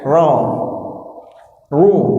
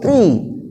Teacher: Ra dibaca fathah, ra dibaca dhammah itu tebal.